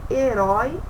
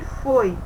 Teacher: Herói, ele tem o som mais aberto. E foi o som mais fechado.